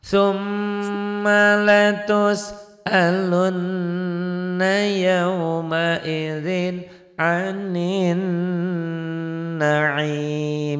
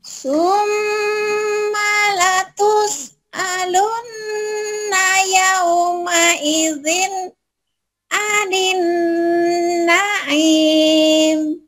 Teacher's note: M-nya banyakin, M-nya 3 tuh. Bahkan lebihin nggak apa-apa. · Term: gunah